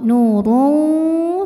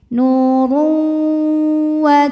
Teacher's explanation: maka tanwin masuk ke wau